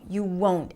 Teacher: This is the beauty of the rising falling pitch that fits in certain situations like in this one. The won't is a long o as in go. You won't. And even though we don't hear the t very clearly, it is there.